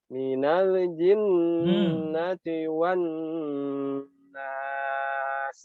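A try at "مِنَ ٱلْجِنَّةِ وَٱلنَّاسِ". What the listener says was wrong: Jangan dipantulkan, jangan minalji, lelenya itu dihilangkan.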